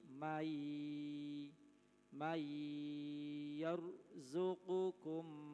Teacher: Manakala ada nun mati bertemu dengan salah satu huruf idgham bi gunnah yang ada 4, ya, nun, mim, waw, maka dibaca idgham. Idgham itu memasukkan atau meleburnya huruf nun mati kepada ya.